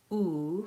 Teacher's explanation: So for example, the sound E, my tongue is high and in the front. Oo, my tongue is high and in the back.